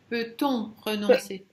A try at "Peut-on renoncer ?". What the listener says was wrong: Renoncer, il n'y a pas de non.